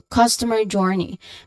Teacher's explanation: Again, customer journey. Both terms, their stressed syllables are placed on the first syllable. So you put slightly more emphasis on cost and jour. So customer journey. · overall term you try to put more emphasis on the word journey. Okay. So because that's what we're trying to highlight here that is customer journey. · you put slightly more emphasis on cos and jor